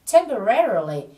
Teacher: Các bạn nhớ nhấn vào âm re ở âm tiết thứ 3 là temporarily. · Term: trọng âm